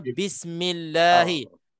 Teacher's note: Lam lafzul jalalah di sini hukumnya tarqiq, tipis sebab mim sebelumnya sebelum Allah itu baris bawah.